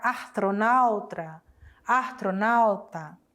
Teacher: Esse S quase que vira um R, vai ficar astronauta